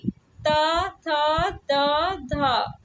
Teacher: यह ता वर्ग की ध्वनियां है और त वर्ग जो है दंत से उच्चारित होता है तो यह दंत ध्वनियां हो जाएगा।